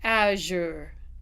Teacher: This is actually the voiced partner for shh. It's made in the exact same place sh just that this one carries voice.